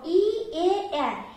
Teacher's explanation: এই 3টি স্বরধ্বনি উচ্চারণ করতে গিয়ে আমাদের যে জিহ্বা সেটা সামনের দিকে এগিয়ে আসছে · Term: সম্মুখ স্বরধ্বনি